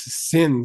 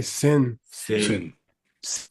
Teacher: it's a low tone okay low tone s it is not a z